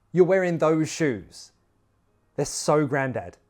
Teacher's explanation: Stress the adjective or the word so